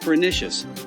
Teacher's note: So you'd pronounce it roughly like pernicious with the emphasis on the NISSH part. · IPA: /pəˈnɪʃəs/